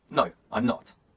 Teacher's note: in short answers the intonation Falls